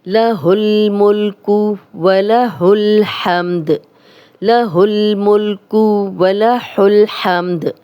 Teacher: वला हुल हमदु, लेकिन स्टॉप करेंगे तो दाल पे जज़म लग जाएगी और ये कलकला वाला हर्फ बन जाएगा